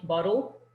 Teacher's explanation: that B sort of slips into the L immediately, bottle. In English, you're not rushing.